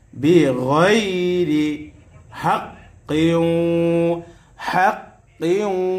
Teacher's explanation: জবরে পরে ইয়া সাকিন লিনের হরফ। লিনের হরফ হইলে তাড়াতাড়ি করিয়া পড়িতে হয় মাদ্দে লিন